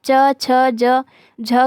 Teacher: आपकी जो जुबान है वो तालू से टकराती हैं। ठीक है, इसलिए तालव्य व्यंजन है।